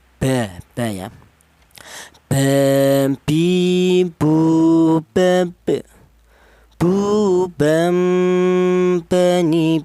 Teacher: Untuk huruf ba. Huruf ba ini keluarnya huruf berasal dari kedua bibir yang rapat